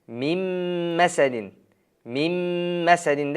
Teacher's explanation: Demak, nun harfi mim harfiga kirib ketdi, kiritildi. O'sha natijasida nun o'qilmasdan mim tashdidli harf bo'lib qoladi, mim masadin, mim masadin, mim masad bo'lib o'qildi. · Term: idg'om